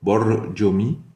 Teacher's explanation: Le R, c'est un R roulé espagnol